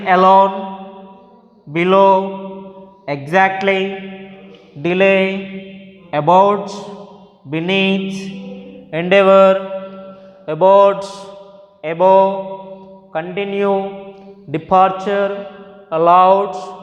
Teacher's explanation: can have stress on the second syllable